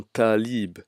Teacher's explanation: Nous avons la lettre Dad qui se prononce aussi avec emphase, comme dans Dabab, brouillard. Nous avons la lettre Ta qui se prononce avec emphase